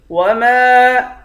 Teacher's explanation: میم کے بعد الف ہے، الف پر مد ہے، اس مد کو 5 الف کی مقدار کھینچیں گے